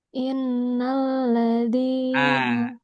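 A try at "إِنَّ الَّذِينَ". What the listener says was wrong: Innya kurang.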